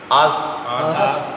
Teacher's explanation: اس اور سین میں سیٹی ہے. اس سوال بھی حروف صفیریہ میں شامل ہے، یعنی سیٹی والے حروف میں، اور یہ مستعلیہ بھی ہے.